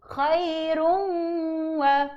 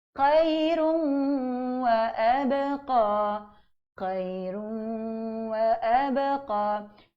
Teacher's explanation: Masih berbaki sedikit di rongga hidung bacaan dengung tersebut.